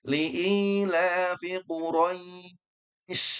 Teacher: Jadi I bukan E ya. Kalau E nanti larinya ke imalah. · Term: mad lin